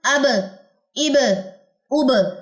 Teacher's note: با جزم کے ساتھ اگر آپ دیکھیں گے تو کلکلا ہو جائے گا